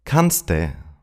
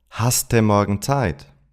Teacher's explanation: in questions, the verb often merges with the second person pronoun du and gets the suffix ste.